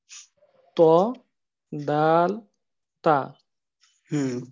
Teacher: জিহ্বার আগা সামনের উপরের 2 দাঁতের গোড়ার সঙ্গে লাগে উচ্চারিত হয় ত দাল তা। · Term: 11 নম্বর মাখরাজ